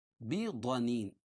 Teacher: ضاد کو موٹا پڑھیں گے کیوں حروف مستعلیہ میں سے